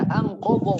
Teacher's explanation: anqa nun sukun bertemu dengan qaf, hukumnya ikhfa hakiki ya.